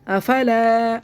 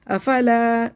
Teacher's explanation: صرف الف مدہ کھینچے گا، باقی کو جلدی جلدی پڑھنا ہے ہمیں. افلا صرف زبر زیر پیش کو جلدی پڑھنا ہوتا ہے، کھڑی حرکات کھینچ کے پڑھنی ہوتی ہے.